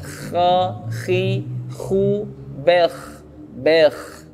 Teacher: huruf kha, huruf yang kedua untuk tenggorokan atas, kha, ya, juga sama dari tenggorokan atas.